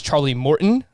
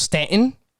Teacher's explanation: i just don't pronounce the t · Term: glottal stop